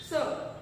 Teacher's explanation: स म्हणजे दात आणि जीभ यांना स्पर्श केला जातो म्हणून याला काय म्हटलं जातं दंत्य. दातातून स्पर्श होतो हे उच्चारताना स उच्चार.